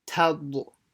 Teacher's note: you go to heavy mouth right at the end before you say the dod